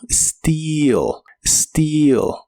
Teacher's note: Las letras EA de esta palabra se pronuncian como una I larga o doble y suena como steal.